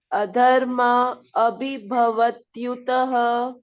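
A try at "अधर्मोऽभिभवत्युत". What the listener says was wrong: No yutaha. Adharmo bhibhavatyuta.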